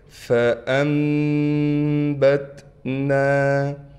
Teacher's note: نون کے بعد با آ گیا، اب اس نون کو ہم میم سے بدلیں گے۔ · دیکھیں چھوٹی سی میم لکھی ہوئی ہے، تو لہٰذا ہم نون ہم نہیں پڑھیں گے، تو ہم نے کیسے پڑھنا ہے؟ فأنبتنا، نون کے بعد الف ہونے کی وجہ سے نون کو کھینچ رہے ہیں، اگر اس نون کو ہم آگے حرف سے ملائیں گے تو پھر ہم اس نون کو نہیں کھینچیں گے۔